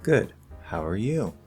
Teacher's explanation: So we're not falling at the end structurally, we're actually rising, passing it back. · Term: pass back rising intonation